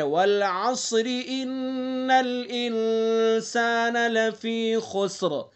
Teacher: ان نون مشدد ہے تو اس لیے انا کے اندر غنہ کریں گے